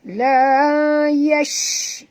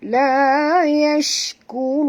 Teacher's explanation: Okay, shim di sini bunyikan tafashi ya. La yash, bunyi angin yang berhamburan ya